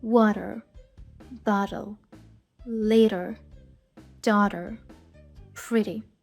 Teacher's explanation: звук флепті звучить схоже на букву Д але вона звучить ніби дуже м'яко коротенько легенько не така повноцінна д а така ось така от легенька і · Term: flapt